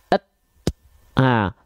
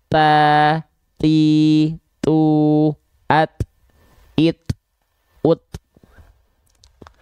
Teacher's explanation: Nah, contoh kalau dia sifatnya hams adalah kadar nafasnya percikan, pasti dia disandingkan dengan sifat tertahan suara. Jadi suaranya tidak mengalir, dia cuman et. Yang keluar percikan nafas saja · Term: syiddah